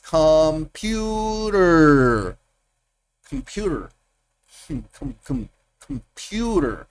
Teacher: El acento está en el pu.